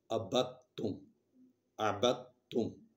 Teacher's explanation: ہم دال نہیں پڑھ رہے، لکھ رہے ہیں، لکھی ہوئی ہے لیکن پڑھیں گے نہیں